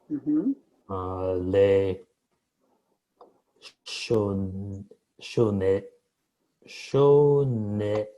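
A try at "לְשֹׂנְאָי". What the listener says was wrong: Okay, so the word hate is lisno. Lisno. Not lishno, but lisno. It's on this side. Lisno. So lisno is to hate. So this one is le. It's to, like with regard to or whatever. And then so, because there's a sin dot and an o. Leso. I. So it's le, so, ne.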